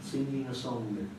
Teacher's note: the Liverpool accent, which is rather velarized, back of the tongue raised